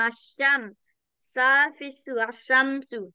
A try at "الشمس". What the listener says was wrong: Not sa, sin. Sin, peso.